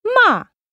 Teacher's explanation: The fourth tone is ma. This is a falling tone, very much like the stress that people put on their yes and no when they really mean it.